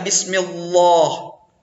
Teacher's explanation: sebelum Allah itu berbaris bawah maka dia wajib tipis